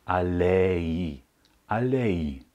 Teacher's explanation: am Ende kein Ei wird also wie das deutsche Ei sondern wir sprechen die Vokale einzeln aus e und i getrennt